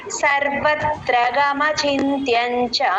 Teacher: అది చా అలా దీర్ఘం పెట్టకూడదండి చ అంతే కట్ చేయాలి